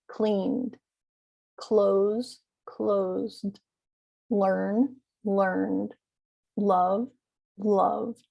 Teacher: notice that d ending is very faint it's not cleaned it's just cleaned it's barely enunciated and actually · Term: small d sound